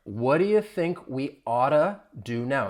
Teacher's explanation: You hear more of a soft D. When the T comes between two vowel sounds, you're going to hear me pronounce it as a flap T. It's going to sound like a soft D.